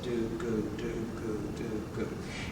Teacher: And that should be right behind your teeth. The gu is pronounced the same place as the K sound, in the back of your mouth. And so what your tongue really is doing in double tonguing is rocking back and forth.